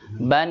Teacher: Jadi nun itu adalah salah satu huruf tawassut, yaitu yang mempunyai sifat di antara syiddah dan rokhawah.